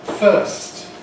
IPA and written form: fɜːst (first)